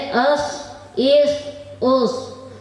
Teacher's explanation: زا، سین، صاد کا مخرج زبان کی نوک اور اوپر کے دانت، نیچے کے دانت تینوں کو ملانے سے ادا ہوتا ہے